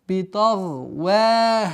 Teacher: Мягкое произношение вау и ха в размере двух огласовок удлинения.